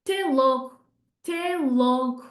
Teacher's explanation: Até logo will turn into te logo, te logo. So even that final O will get dropped off as well